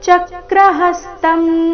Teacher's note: ಚ ಮತ್ತೆ ಹ ಮೇಲೆ ಆಘಾತ